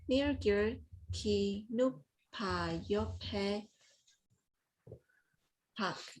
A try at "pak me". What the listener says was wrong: Don't say ba, don't say b. It's pa, pak me.